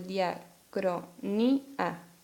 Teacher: Nótese que ahí tenemos una vocal cerrada tónica con una vocal abierta átona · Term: hiato